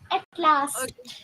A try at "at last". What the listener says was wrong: It's last. Okay. What is this? Last. It's not lost